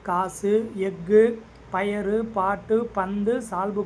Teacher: அப்ப முதலிலும் இடையிலும் வரும்போது முழுமையாக ஒழிக்கிறது. ஆனால் இறுதியில் வரும்போது மட்டும் அது தன்னுடைய ஒரு மாத்திரையிலிருந்து அரை மாத்திரையாக குறைந்து ஒலிக்கும் · தன்னுடைய ஓசையிலிருந்து குறைந்து ஒலிக்கக்கூடிய உகரத்தை குற்றியல் உகரம் அப்படின்னு சொல்லி சொல்கிறோம்.